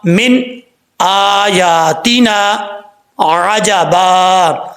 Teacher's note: من نہ کی آواز نہیں آنی چاہیے. نون من کے نون پہ آواز جم جائے، رک جائے، پھر آگے حمزہ کی آواز نکلے